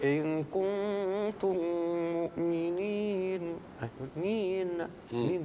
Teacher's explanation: هو ان تترك طرف اللسان في لحمه الاسنان العليا وهو مخرج النون فتخرج الصفه اللازمه للنون وهي الغنه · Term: تطنين